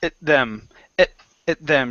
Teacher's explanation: actually we pronounce at like it. It's really short.